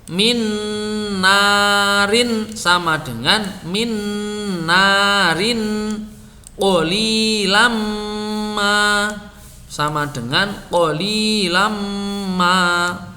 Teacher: nun sukun atau tanwin kalau bertemu nun atau mim, nun sukun dan tanwinnya hilang menjadi nun dan mim bertasydid. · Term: idgham bi gunnah